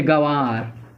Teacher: इसके उच्चारण करते समय वायु नाक और मुख दोनों से बाहर निकलती है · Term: अनुनासिक